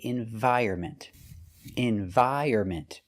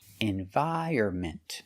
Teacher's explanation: The stress is on the second and fourth syllable.